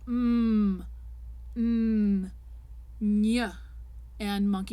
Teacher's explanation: the air is cut off in the mouth by the tongue position or the closed lips and so the air has to go out through the nose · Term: nasal consonants